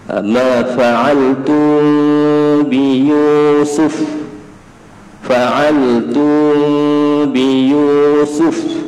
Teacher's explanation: ikhfa syafawi dengung kemudian renggangkan sedikit dua bibir mulut